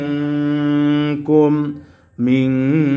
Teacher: নুন সাকিনকে গুন্নাহ করেছি কেন কারণ এই নুন সাকিনের পরে কাফ আসছে